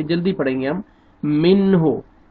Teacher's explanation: کیونکہ نون ساکن کے بعد حروف حلقی میں سے ہا آ رہا ہے تو جلدی پڑھیں گے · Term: اظہار